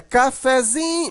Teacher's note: A sílaba mais forte aqui é o zin, né? Cafezinho, mas o fé continua um pouquinho forte. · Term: sílaba subtônica